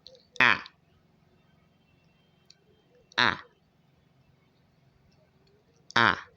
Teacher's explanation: Okay, wide open, and your lips will spread. Okay, your mouth wide open and your lips spread